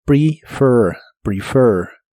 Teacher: La primera E de esta palabra se pronuncia como I corta, y la última parte se pronuncia con tu lengua lo más atrás que puedas y debe sonar como monstruo.